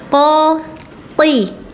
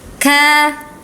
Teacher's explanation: QF dan kaf sama-sama di pangkal lidah ya. Ee lidah yang paling belakang. Kalau qf mah belakang banget. Kalau kaf sedikit di depannya ya. Hati-hati ketika kasrah.